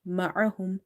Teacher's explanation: Ain is from the middle of the throat.